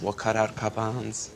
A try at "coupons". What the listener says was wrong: It's coupons. No, you're saying cup-ons.